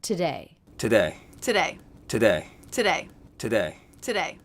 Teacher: Now here we have today 3 times. Always the first syllable is reduced to the schwa sound